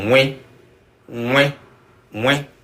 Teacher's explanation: Nasalized means it's coming from the nose, or at least part of it. Part of the release of the air is coming from the nose.